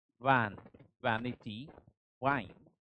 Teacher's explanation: First is uttered by keeping or by connecting lower lip to the upper teeth